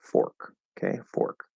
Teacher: and that's an r-colored o